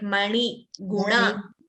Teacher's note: when you say na, like mani, guna, you're twisting your tongue more.